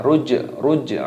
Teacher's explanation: Ruj'a jimnya berharokat sukun dimatikan, maka di sini dibaca qalqalah